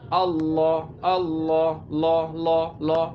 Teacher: আল্লাহ যখন বলবেন তখন কিন্তু ঠোঁট গোল হবে না।